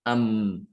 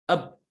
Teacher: Ketika bibir itu menutup rapat, ya, disertai dengan membukanya rongga hidung. Di sini nutup, di sini buka, ya, sehingga suaranya keluar dari sini rongga hidung. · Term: guna